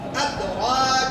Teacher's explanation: دال زبان کے نوک اوپر کے دو دانتوں کی جڑ کی طرف والے آدھے حصے لگے